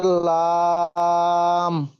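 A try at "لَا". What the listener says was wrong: লা, এটি পুর হরফ নয়। লা। আলিফ টান, কিন্তু মাদ্দার কারণে এক আলিফ টান দিতে হবে। লাম, আলিফ জাবার লাম। লা, লাম নয়, লা।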